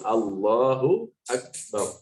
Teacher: Allah itu diperhatikan ya, masalah bacaan takbiratul ihram ini, bacaan takbir diperhatikan. Allah itu lam jalalahnya itu panjang, 2 harokat 1 alif.